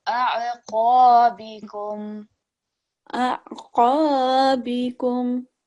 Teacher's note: And also just remember, rather than reading it as qa, we want to make it thick